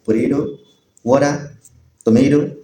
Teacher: When the sound comes in between two vowels and the latter vowel is not stressed, the T is stopped in such a way that it sounds like a D or an R slightly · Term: tapping of tea